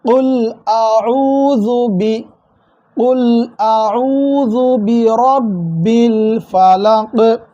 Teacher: நல்லா அடி தொண்டையிலிருந்து உச்சரித்து குல் என்று சொல்லணும். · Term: காஃப்